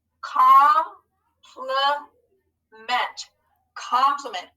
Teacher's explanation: i heard a schwa in the middle syllable